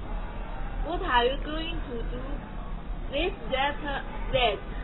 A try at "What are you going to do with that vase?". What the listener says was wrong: 好 ， 你 的 问 题 在 这 里 了 。That ▁vase ▁这 个 ▁that ▁词 根 本 读 不 出 来 ， 你 们 真 的 去 看 过 ▁Ace ▁老 师 讲 的 连 读 视 频 吗 ？ ▁That ▁vase ▁这 个 ▁T ▁它 读 不 出 来 的 ， 所 以 是 ▁that ▁vase， ▁只 是 有 个 停 顿 罢 了 。 ▁That ▁vase， ▁那 你 要 读 ▁that， ▁这 是 中 式 的 发 音 。